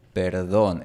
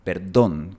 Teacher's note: en Bogotá, Colombia, se pronuncia perdón, perdón, con una D fuerte